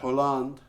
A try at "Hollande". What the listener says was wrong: the French don't pronounce the H.